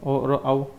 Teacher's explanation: ओ और औ, इनका उच्चारण कंठ और ओष्ठ से होता है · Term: कंठोष्टम